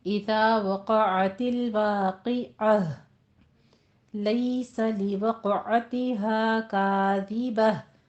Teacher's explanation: वक्फ की सूरत में आपने ताए मरबूता को हा में बदल देना है, फिर आपकी हा की साउंड आखिर में निकलनी चाहिए।